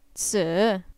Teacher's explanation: a falling rising tone